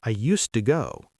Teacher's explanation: In connected speech, it becomes something like, I used to go. The D disappears and the Y sound appears.